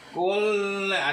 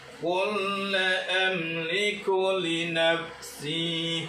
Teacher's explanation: jadi lam yang pertama dalam fi'il amr ini masuk ke dalam lam yang kedua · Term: diidghamkan